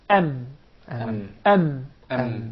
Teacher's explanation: there is a complete or closing of the lips the Two Lips